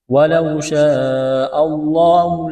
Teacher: یہ لمبی مد ہے، 4 الف کے برابر اس کو کھینچنا ہے